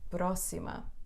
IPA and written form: prɔsimɐ (pró-xi-ma)